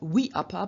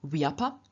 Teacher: For example, we apa ni, to lead away, has a third singular wiapa nayati, where the I of we in front of the a of apa doesn't remain as it is, but it changes into a y, and so we don't have we apa, but we have wiapa. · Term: semi-vowel counterparts